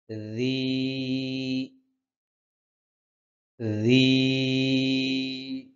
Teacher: জিহ্বার আগা সামনের উপরের দুই দাঁতের আগার সাথে লাগবে।